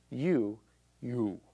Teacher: the tongue comes to the back of the mouth and humps up so what's happened is by pulling back we're changing the pressure